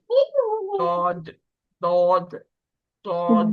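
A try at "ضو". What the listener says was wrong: دود نہیں کریں اس کو. دود دال کے مخرج سے نہیں پڑھیں. دود نہیں ہے یہ. واد واد. اس کے مخرج میں آواز جو ہے وہ پھیلی ہوئی ہوتی ہے.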